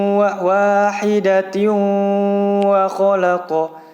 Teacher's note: di situ juga tanwin yang bertemu dengan huruf waw ya, dibaca dengung yang lama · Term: idgham bigunnah